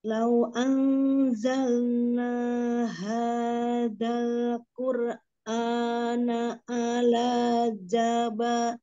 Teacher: Tadi azalna, naknya dua harokat ya